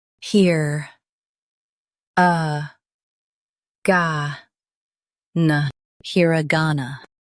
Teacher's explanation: Emphasize ga and keep here and na light.